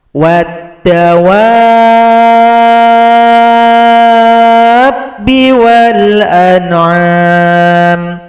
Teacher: mad lazim mqal kalimi panjangkan wau enam ketukan baru tasdid pada huruf ba